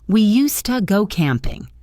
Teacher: In speech, used to sounds like used to. The D sound disappears.